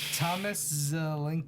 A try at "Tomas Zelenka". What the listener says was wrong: That's actually Tomas. Because there's no H.